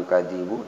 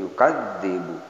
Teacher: Yukadzibu ada tasjid, kemudian ditahan, bukan yukadzibu tapi yukadzibu.